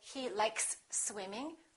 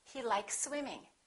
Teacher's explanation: Here we have an s likes and here we have another s. When we have two same consonants, we only pronounce one. Likes swimming.